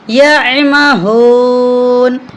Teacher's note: یا مہون نہیں پڑھیں گے، بلکہ ہم یا کو عین کے ساتھ ملا کر پڑھیں گے. عین حروف حلقی ہے، اس لیے ہم حلق سے اس کی ادائیگی کریں گے.